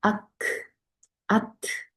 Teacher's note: 네, 여기 캬프하고 타만요, 딱 마크라지가 막혀요. 그래서 아트, 바람은 나오는데 마크라지가 막혀 소리는 더 이상 안 나요.